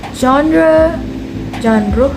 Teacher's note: with the Z sound similar to the S in measure